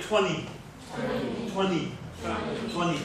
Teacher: So the T completely disappears. There's no T at all.